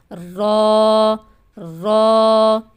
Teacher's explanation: زبان کی نوک اور مقابل کے تالو سے ادا ہوتا ہے۔ بالکل یعنی مسوڑے ہیں، جیسے لام ہم نے پڑھا ہے اسی جگہ سے را پڑھنا ہے، لیکن لام کے مخرج سے تھوڑا پیچھے کی جانب ہوگا، وہ زبان کی نوک کو ہمیں لگانا ہوگا، اور یہ سامنے والے جو 2 دانت ہیں نا، ان کے مسوڑوں سے لگتا ہے، را را۔